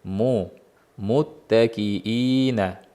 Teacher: Mimni zammasiga e'tibor beramiz. Mu to'la chiqish kerak. Uchraydigan kamchilik takiina bo'lib qoladi.